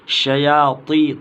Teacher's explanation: شیاطی طا کو موٹا پڑھیں گے